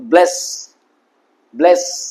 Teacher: একটা হিজিং সাউন্ড হবে যখন দন্ত স এস উচ্চারণ করছো। কিন্তু যে এসএইচ করছো, শাট, শাট।